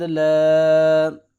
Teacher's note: 3 الف کے برابر لمبا کریں گے اس مد کو